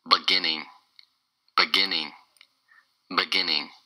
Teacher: It's three syllables, and the stress is on the second syllable.